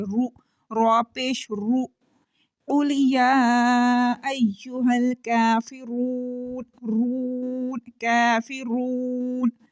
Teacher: اب را کے اوپر پیش پڑی ہوئی ہے اور را کو ہم موٹا کر کے پڑھیں گے · ہمارا منہ گول بھی ہو رہا ہے اور منہ بھر کے بھی پڑھا جا رہا ہے